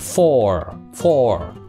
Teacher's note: Lý do tại là O nó phát âm nó là O 2 chấm O dài đó. Nhưng mà tận cùng bằng âm R cho nên nó đọc hơi có ờ chút xíu